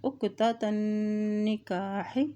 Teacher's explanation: نون کے پر شد ہے اور جب بھی نون کے پر شد آتی ہے وہاں پہ غنہ بھی ادا کیا جاتا ہے